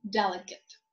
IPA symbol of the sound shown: ɪ